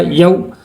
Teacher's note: واو لین کو جلدی اور نرمی سے پڑھتے ہیں